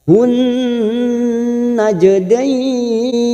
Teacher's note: Masuk ke huruf nun yang bertasdid dan ditahan selama 3 harokat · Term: alif lam samsiah